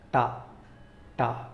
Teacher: there is no vibration at the throat, it is a voiceless sound. మనం ఒక శబ్దాన్ని చదివినప్పుడు, కాన్సనెంట్ సౌండ్ చదివినప్పుడు మన థ్రోట్ దగ్గర వైబ్రేషన్ అనేది మన చేతులకి అనిపించకపోతే దాన్ని వాయిస్లెస్ సౌండ్ అంటాం.